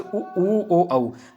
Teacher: व्रतमुखी में ओष्ठ की आकृति गोल हो जाती है